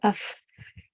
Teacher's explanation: فا کا مخرج جہاں پہ آ کے ٹھہر رہا ہے وہاں پر آپ دیکھ رہی ہیں کہ سانس جاری رہ رہی ہے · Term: ہمس